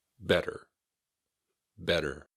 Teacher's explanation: It can sound a little bit like it's got D's instead of T's in the middle.